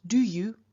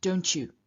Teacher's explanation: After the t, the pronunciation of the y changes from y to something a little more like ch.